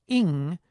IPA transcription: ɪŋ